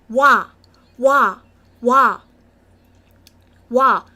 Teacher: And if you have participated, if you have learned week 1, 2, and 3 classes, you will be able to know that 2 vowels are added into this one vowel, and it became a new vowel, and the vowel o sound and the vowel a sound are combined into one vowel, and it made the sound wa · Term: wa sound